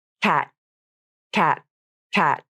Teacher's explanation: My tongue tip came up, and I stopped the airflow there and in my throat. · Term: unreleased T